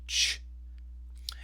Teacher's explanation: your tongue is going to start with the t, t, t, t, but it's going to finish with this sh sound. So you kind of have to put them together. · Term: ch sound